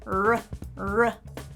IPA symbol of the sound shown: r